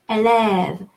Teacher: the second A is going to be both more open, élève, it's longer